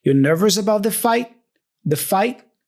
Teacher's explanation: he pronounces the T there as a stop consonant